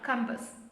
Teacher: ASS. That A gets a schwa sound.